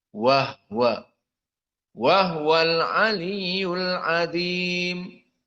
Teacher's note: Maka wahwa di sini dibaca dengan sukunil ha seperti qiraah al-Kisai.